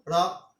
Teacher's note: তুমি নিজে উচ্চারণ করে দেখো, র ছোট্ট করে টোকা দিয়ে চলে যায়। একটু কম্পন হয় বটে, বাট কম্পনটা স্থায়ী হয় না। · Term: তাড়িত